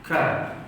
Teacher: Ka hamas, huruf kaf depan sedikit dari makhraj huruf qaf.